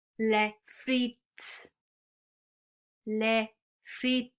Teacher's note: we don't pronounce the S on the end